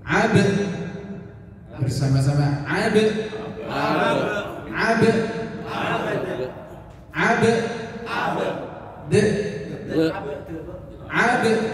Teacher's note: Jadi dua-duanya ini qalqalah. Yang pertama baknya dipantulkan, yang kedua juga dalnya dipantulkan.